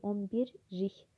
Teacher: Bəli, lik şəkilçisinin L samiti R-ya çevrilir.